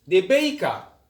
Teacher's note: the r is silent at the end